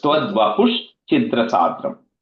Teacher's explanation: Vapuhu, the visarga, that visarga becomes a ish because cha is coming later. So it's tvad vapush chidra sadram.